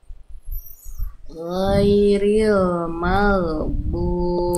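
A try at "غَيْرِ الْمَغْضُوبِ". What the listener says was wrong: Tebalkan ginnya. Gin sukunnya ibu. sukun kurang tebal sedikit ketika sukun dan didahului fathah dia tetap dibaca tebal.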